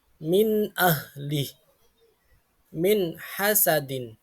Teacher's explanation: membaca nun sukun atau tanwin dengan jelas tanpa dengung. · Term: izhar